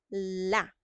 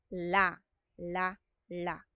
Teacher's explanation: So yung dila natin aakyat sa itaas na gilagid la la la may tunog